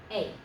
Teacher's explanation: It's kind of like our word day, but without the D on the beginning, and don't give the E quite so much credit as you would do in English when you say day.